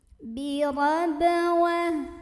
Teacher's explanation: Maka cara membaca huruf ba-nya ini dipantulkan dengan pantulan yang kecil dan tetap mengalir. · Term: qalqalah sughra